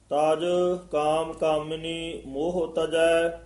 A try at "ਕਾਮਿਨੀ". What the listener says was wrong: ਹਾਂ, ਤਾਜ ਕਾਮ ਕਾਮਿਨੀ ਮੰਮੇ ਦੇ ਸਿਹਾਰੀ ਲੱਗੀ ਹੋਈ ਹੈ। ਉਚਾਰਨ ਕਰਨੀ ਹੈ। ਕਾਮਨੀ ਨਹੀਂ ਕਹਿਣਾ ਕਾਮਿਨੀ ਇਸ ਤਰ੍ਹਾਂ ਬੋਲਣਾ ਹੈ। ਤਾਜ ਕਾਮ ਕਾਮਿਨੀ ਮੋਹ ਤਜੈ।